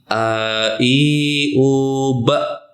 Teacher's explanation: hamzah di sini andakannya di dalam atau pangkal tenggorokan